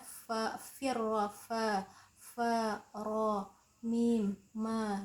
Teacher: Huruf fa itu keluarnya di perut bibir bawah, ro di ujung punggung ujung lidah, mim di syafatain bibir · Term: idlaq